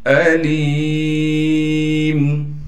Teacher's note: لام کے بعد یا ساکن ہونے کی وجہ سے لام کو یا سے ملائیں گے اور لام کو ایک الف کی مقدار کھینچیں گے